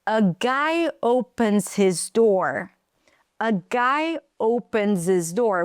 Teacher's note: We drop the H so we can connect it.